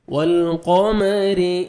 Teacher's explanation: را کے نیچے زیر آئے گا تو را کو باریک کر کے پڑھیں گے